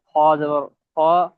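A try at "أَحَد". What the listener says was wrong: খ না জি, হা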